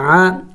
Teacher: عین زبر ع. عین حروف حلقی میں سے ہے، حلق سے ادا کرنا ہوگا. عین زبر ع.